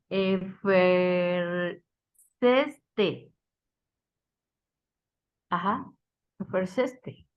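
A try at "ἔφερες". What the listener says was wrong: nomás póngale la S, hermana, al final,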